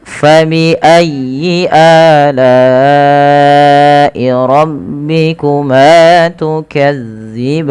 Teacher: tekan ya-nya tapi dengan lembut karena ya termasuk huruf lin